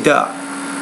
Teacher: So she would put her tongue not between her teeth, but behind her teeth. She was pronouncing it more as an alveolar consonant, not as an interdental consonant.